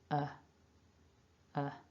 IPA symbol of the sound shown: ə